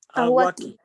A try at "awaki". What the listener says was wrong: Bien, Maisumak.